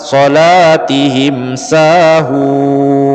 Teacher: nun mati bertemu huruf so, namanya ikhfa hakiki. An, dengungkan 2-3 harokat.